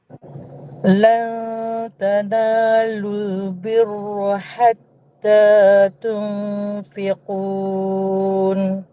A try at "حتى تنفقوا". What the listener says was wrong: Bukan tunfikun. Tunfiku. Ku je.